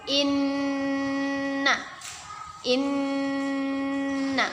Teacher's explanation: kita tahan dan kita dengungkan dua harokat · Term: gunnah